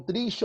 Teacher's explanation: ela é a palavra paroxítona. A força recai na penúltima.